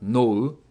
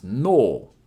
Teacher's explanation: But when /u/ is placed after an /o/ sound it's going to make it a long vowel So it's not ‘no-u’ it’s ‘nou’ And it means the ‘brain’